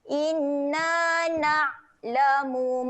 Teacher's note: huruf ain kena tahan angin, jangan ada lantunan, tahan saja.